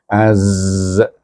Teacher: Zai ni antara ujung lidah dengan tengah-tengah gigi kacip kita.